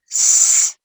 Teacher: And if you pronounce s, this is voiceless, no vibration.